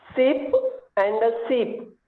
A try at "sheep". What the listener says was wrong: Correct. Although I now notice that you have a little trouble, I think, with the sh sound. So and sh.